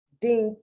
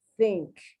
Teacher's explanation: I hear the D sometimes rather than the TH.